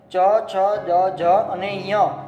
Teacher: એના પછી છે તાલુ, તાળવાની મદદથી જે 5 વ્યંજન બોલવામાં આવે છે. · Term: ચ વર્ગ